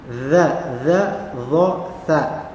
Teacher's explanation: Kita lihat di sini ada makhraj yang kelima untuk huruf dha, dha dan tha. Keluar dari ujung lidah dari arah punggungnya dan menempel pada ujung dua gigi seri atas.